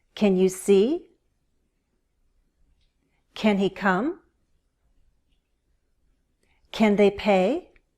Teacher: Yes, no questions use rising intonation. Listen to how my voice goes up at the end.